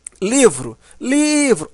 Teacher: sílaba mais forte nós chamamos de sílaba tônica tá livro livro observa que o Li é a sílaba mais forte